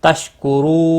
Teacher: رو واو مدہ ہے، ایک الف کے برابر کھینچ کر پڑھیں گے اور را کو پیش کی وجہ سے پر پڑھیں گے۔ اور وقف کی صورت میں نون ساکن پڑھا جائے گا، وقف بالاسکان ہوگا، مد العارض وقفی ہوگا، 3 سے 5 الف کے برابر کھینچ کر وقف کریں گے۔